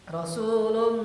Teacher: gunnah kita tahan 2 harokat sehingga ada suara masuk ke rongga hidung, khaysyum. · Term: idgham bigunnah